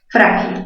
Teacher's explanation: mayor fuerza en fra, grave terminada en L